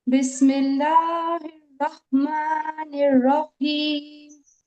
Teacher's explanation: رحمان میں تو بڑی ہا ادا کری آپ نے، اور رحیم میں آپ نے چھوٹی ہا ادا کر دی، حلق کے سینے والے حصے سے ادا ہوئی ہے آپ کی یہ ہا